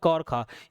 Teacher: कंठव्य ध्वनि हो जाता है आपका क और ख।